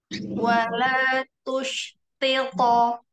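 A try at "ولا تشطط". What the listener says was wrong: Iya, taknya tetap jaga istifalnya. Istifalnya dijaga. Masih tus, masih tu. Nah, jadi tak itu ada hamasnya.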